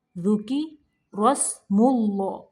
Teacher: ذُكِرَ را کو موٹا پڑھنا ہے